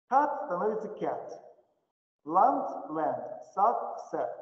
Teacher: Где? Значит, по умолчанию А передвигается вперед и становится Э.